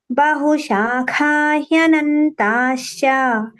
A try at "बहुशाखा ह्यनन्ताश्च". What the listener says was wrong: Sh and ch should come nicely, separately. Sh and ch should sound separate, huh? Not mixed with each other.